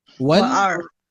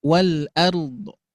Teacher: Tapi ada kebiasaan kebiasaan orang Arab sana itu memberikan sentuhan harokatnya di akhir. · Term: raum